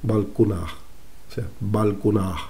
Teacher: En vez de vulcuna, como se leyó en el siglo XIX, sino sería algo así como más bien valcunata, o en este caso, que en el árabe clásico se cree que no se pronunciaba la T final, sino como una aspiración